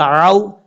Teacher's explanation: یہ واو مدہ نہیں ہے، یہ واو لین ہے، اس لیے اس کو لمبا نہیں کریں گے